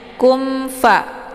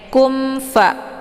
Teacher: mimnya dibunyikan secara jelas atau jelas bunyi sukunnya. Kumfa, cukup ditekan saja, ya, bunyi m. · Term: izhar syafawi